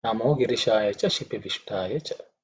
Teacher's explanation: make sure that ish, this is cerebral ish